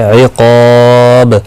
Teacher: وقف کی صورت میں با ساکن پڑھا جائے گا، اس پر قلقلہ بھی ہوگا